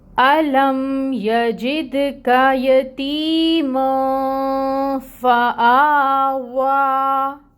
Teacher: مطلب یہ ہے کہ ہم نے اس مد کو اب 2 حرکت کے برابر واو کو لمبا کھینچنا ہے۔ واو کے لیے اپنے ہونٹوں کو اچھے سے راؤنڈ بھی کرنا ہے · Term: کھڑی مد